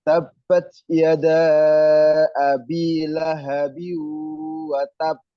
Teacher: Lahabiu watab itu ditekan sama memantul.